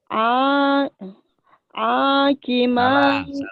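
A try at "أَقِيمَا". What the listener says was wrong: Yang panjang. kenapa A-nya panjang saya tanya. Emang ada yang panjangin? A-nya. Udah tahu ini panjang, tapi di mulut belum sinkron antara otak dan mulutnya.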